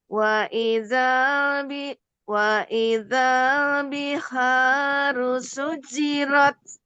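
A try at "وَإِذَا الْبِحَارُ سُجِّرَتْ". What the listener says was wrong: Jangan langsung dilepaskan.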